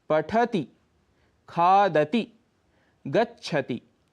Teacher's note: पठति शब्द में ठ पर यदि आप हल्का सा रुकेंगे तभी आप त में ह्रस्व ई बोल पाएंगे